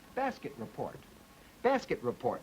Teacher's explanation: The plus juncture comes between the T and the R.